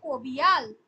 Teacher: শ্রুতির ধ্বনি যেটা আছে, শ্রুতির ধ্বনি হচ্ছে যে যখন পাশাপাশি যখন বসছে, ঠিক আছে, পাশাপাশি দুটো শব্দ, দুটো ধ্বনি যখন উচ্চারণ হচ্ছে, উচ্চারণের সুবিধার জন্য ওই দুটো ধ্বনির মাঝে তৃতীয় আরেকটা ধ্বনির আগমন ঘটছে, তাকে আমরা বলবো শ্রুতির ধ্বনি।